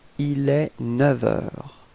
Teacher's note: And so with the liaison, so you can see that the liaison is coming between 9 and heure, and actually it's quite tricky in this case, because we will change the sound, so we won't pronounce the F, but it would sound a bit more like V, like a V. Okay, so if you make the liaison, it would sound like il est 9 heures.